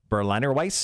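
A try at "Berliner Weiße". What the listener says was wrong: Berliner Weiss. The W usually comes out as a V when you say it. Weiss.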